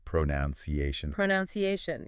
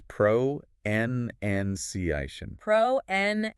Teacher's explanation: the most common mistake I hear is people adding a noun sound in there